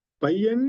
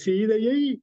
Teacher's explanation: ஐகாரத்தை நாம் குறிலாக தன் மாத்திரையில் குறைந்து ஒரு மாத்திரையாக கணக்கில் கொள்ள வேண்டும். அது தன்னுடைய ஓசையிலே முழுமையாக ஒலிக்கவில்லை. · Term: ஐகார குறுக்கம்